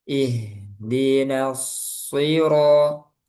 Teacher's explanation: Haknya alirkan rokhawah ih di ih di harus jelas udaranya suaranya Ihdinas siro. Sodnya tebal. Nanya tipis.